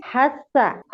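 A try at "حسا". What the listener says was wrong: সুন্দর হয়েছে, সুন্দর হয়েছে, সুন্দর হয়েছে।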